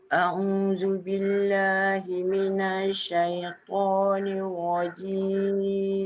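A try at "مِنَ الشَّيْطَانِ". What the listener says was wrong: Kalau minash tu kan dia masuk cepat sikit boleh tak? Dia kalau minasyai, jangan minasyai. Dia jangan terheret. Masuk sebab dia sabdu kan? Minasyai.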